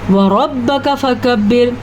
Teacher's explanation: را کو پر پڑھیں گے، کاف کو باریک پڑھیں گے۔ فَكَبِّرْ، یہاں پہ یہ کاف باریک ہے، بعض لوگ اس کاف کو بھی موٹا کر لیتے ہیں اور موٹے کو پتلا پڑھ لیتے ہیں، اسی لیے قرآن مجید کو سمجھ کے پڑھنا بہت ضروری ہے۔